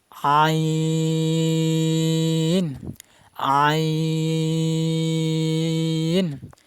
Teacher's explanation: আইন হরফের মাকরাজ হলকের মধ্যখান, মানে গলার মধ্যখান থেকে উচ্চারণ হবে। হালকা চাপ দিয়ে, বেশি চাপ দেওয়া যাবে না।